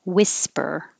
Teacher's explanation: Whisper, forget about the H, it's just whisper.